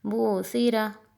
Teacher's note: اور یہ ہے بوثیرہ، اسے بوثیرہ نہیں پڑھنا، سین کی آواز نہ آئی، تین نقطوں والا تا ہے